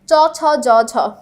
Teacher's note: কোন ব্যঞ্জন ধ্বনি বর্ণসমূহের উচ্চারণ স্থান অগ্রতালু, সামনের তালু দিয়ে আমরা উচ্চারণ করছি কি চ ছ জ ঝ, আমাদের সামনের জিভের সম্পূর্ণ অংশটা লাগছে, ঠিক আছে, তালুতে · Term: তালব্য ব্যঞ্জন